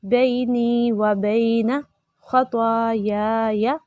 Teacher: پہلا یا ہم نے لمبا کیا کیونکہ اس کے ساتھ الف ہے ، خالی الف سے پہلے زبر، الف مدہ کہلاتا ہے، ٹھیک